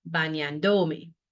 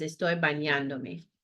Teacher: We want to keep the stress on the previous A where it was before me was attached